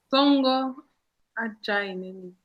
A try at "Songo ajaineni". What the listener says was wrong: Non, c'est pas Ajai, c'est A. Jaineni. Donc tu fais Aïe. comme si tu as mal. Aïe.